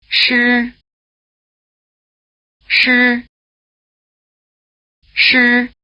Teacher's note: The sound value of the letter I after a retroflex consonant, such as sh, is a prolonged R sound with a full vowel strength. Remember that the retroflex consonants are pronounced with the tongue in the same R position.